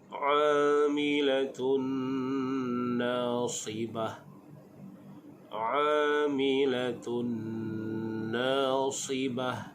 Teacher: kita bertemu dengan hukum dhammatain bertemu dengan nun, dibaca dengan hukum idgham ma'al ghunnah. Hukum membacanya dengan dengung, dan di hujung itu kita waqaf dengan ha.